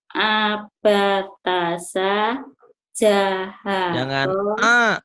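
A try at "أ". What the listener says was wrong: Ya, ulangin A-nya. Jangan ke ain tapi A. Terang bunyi A-nya lagi. A gitu. Jadi, Pak Ustadz masih mendengar suaranya itu huruf alifnya kayak ke ain. Jadi terang. Terangin. Jadi A.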